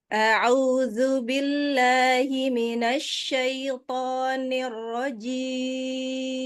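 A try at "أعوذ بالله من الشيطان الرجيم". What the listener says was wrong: Ain mah sempurna lagi dhamanya, au. Nah, coba zu, dhammah zu.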